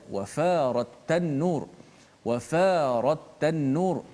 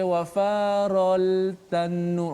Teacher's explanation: Lam tu dimasukkan terus secara total ke dalam huruf ta. Maka tak bunyi dah suara lam. Tak boleh baca wafarol tanur. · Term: idgham syamsi